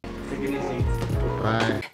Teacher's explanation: The T in take is a true aspirated T, releasing air as the tip of the tongue releases from just behind the front top teeth.